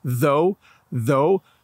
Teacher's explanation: tongue between your teeth when you say it